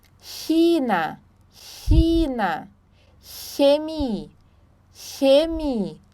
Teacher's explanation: ch ele tem um som parecido com ch mesmo tá então para produzir este som precisa se colocar a ponta da língua nos dentes inferiores e pronunciar o som do ch no português tá então assim ó colocar então a língua aqui embaixo né